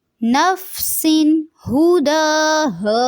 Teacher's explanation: نفسن نفسن یہاں پہ اخفا نہیں کریں گے کیونکہ تنوین کے بعد 2 زیر کے بعد حروف حلقی میں سے ہا آ گیا ہے تو تنوین کو واضح کریں گے